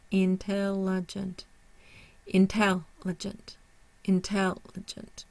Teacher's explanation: So we have a primary stress on the tel, and we do not have a secondary stress. The third syllable is considered unstressed schwa. The fourth syllable is considered unstressed.